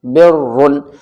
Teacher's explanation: را کے اوپر دو پیش ہیں تب بھی موٹا پڑھا جائے گا